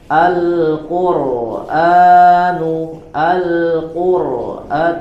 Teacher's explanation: Alquran dibaca dengan tebal kebalikan dari yang dibaca dengan tipis